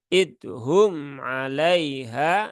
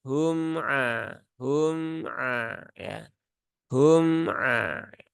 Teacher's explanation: mim Dia ee sifatnya tawasud bukan syiddah maka Jangan di tekan jangan disyidahkan